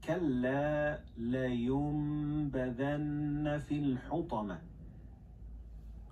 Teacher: you don't pronounce noon but you pronounce meme